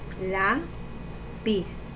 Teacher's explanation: La, porque es la más fuerte y tiene acento. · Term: sílaba tónica